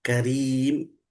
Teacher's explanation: बहुत अच्छे, माशाल्लाह। करीम, रा बारीक पढ़ेंगे, मोटा नहीं पढ़ेंगे, करीम नहीं, करीम।